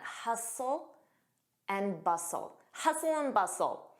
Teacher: Notice that T is silent.